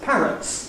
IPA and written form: ˈpærəts (parrots)